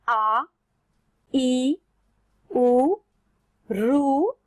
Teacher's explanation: ये हमारे हो जाते हैं दीर्घ स्वर, क्योंकि यहाँ इन्हें 2 मात्रा जितना समय लग रहा है बोलने में